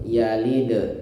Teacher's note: Nah, ini juga harus di qalqalah ya, karena dal termasuk huruf qalqalah. Jika dia sukun maka harus dipantulkan.